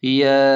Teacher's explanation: یا کھڑا زبر یا پر مد ہے تو اسے 3 الف کے برابر کھینچ کر پڑھیں گے، یا اس طرح۔